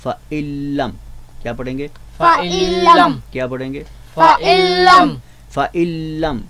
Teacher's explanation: फ़ाइल्लम में आपने देखा कि नून बिल्कुल पूरी तरह लाम मुशद्दद में हमने इदगाम कर दिया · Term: गुन्ना के बग़ैर इदगाम